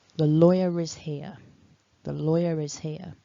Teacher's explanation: So, for example, if I say a sentence like, the lawyer is here, the lawyer is here, that tiny R will jump in to sort of link between the word lawyer and the word is. That's because where I'm from, my accent does not have a strong R sound in it.